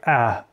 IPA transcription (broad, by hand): æ